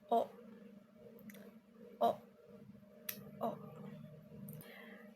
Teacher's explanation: Dibentuk dengan bibir membulat. lidah berada di posisi sedikit rendah dan agak ke belakang.